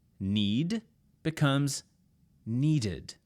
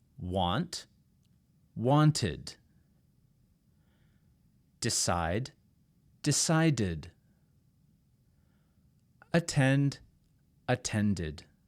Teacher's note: d if your root root word ends in t or d you will add an ID sound and this is very important you add an extra syllable